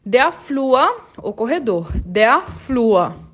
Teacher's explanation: esse UR eu vou falar como se fosse um U e um Azinho